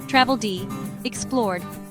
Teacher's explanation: The sound is D after voiced sounds